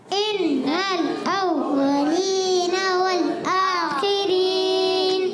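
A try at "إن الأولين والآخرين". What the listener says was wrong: थोड़ा सा झटका है, इन्नल भी नहीं करना।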